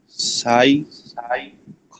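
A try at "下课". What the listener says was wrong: আবার সাই না, সাই না, x I A শিয়া, x I A শিয়া। কে খ, শিয়া খ।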